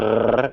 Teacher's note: The alveolar trill is the front one. It's with your tongue behind your front teeth, where you say D.